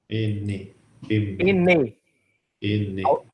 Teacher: O N, eu não uso lábio, eu uso o palato, né? Eu uso a língua.